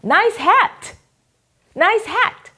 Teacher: 무성음으로 끝나는게 있죠 크 이렇게 뭐 이렇게 끝날 때 이런 경우는 앞에 오는 모음이 짧아져요